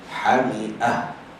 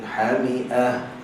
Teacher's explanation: So ta marbutah ni bila kita nak berhenti atas dia, maka kita berhenti dengan ha simpul.